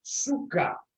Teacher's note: The epsilon, pronounced in modern Greek e, in Doric was u.